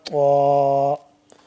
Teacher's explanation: زبان کی نوک کو ہم نے تالو اوپر والے تالو کو دانتوں کے پیچھے لگا کے پڑھیں گے تو موٹا کر کے پڑھیں گے.